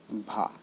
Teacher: भा जो है घोष है, महाप्राण है और ओष्ठ ध्वनि व्यंजन है।